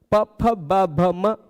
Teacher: होठों से टच कर दिया जाता है, हवा को रोक दिया जाता है। ओष्ठ हो गए उच्चारण स्थान।